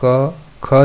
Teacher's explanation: क ख जब आप बोल रहे हैं तो कोई कंपन नहीं है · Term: अघोष